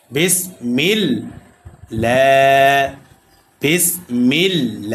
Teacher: এ আল্লাহর সাথে লামকে বারিক করেছি। অর্থাৎ পাতলা করে পড়েছি। কেন? কারণ এই আল্লাহ শব্দের লামের পূর্বে জের আসছে।